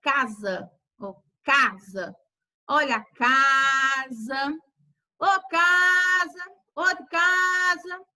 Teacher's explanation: Ela é pronunciada com mais força, mais fortemente. Então, na sílaba cá, ela foi pronunciada com mais força, mais rápido, mais intensidade do que a sílaba sa. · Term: sílaba tônica